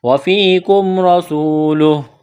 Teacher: میم ساکن کے بعد را ہے، اظہار کریں گے، وفیکم رسولہ، را کو موٹا کرنا ہے، سین میں سیٹی کی آواز پیدا کریں گے